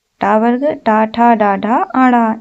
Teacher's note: ट वर्ग का उच्चारण स्थान मूर्धा से